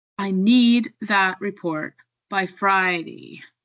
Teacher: Notice how need and Friday are stronger and louder. The small grammar words become softer and this creates a natural rhythm. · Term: stress